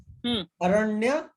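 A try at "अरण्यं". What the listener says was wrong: Aranyam. Who will read the Anuswara?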